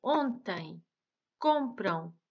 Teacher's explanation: A letra O também é nasalizada quando acompanhada na mesma sílaba de uma consoante nasal, m, n. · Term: O nasalizado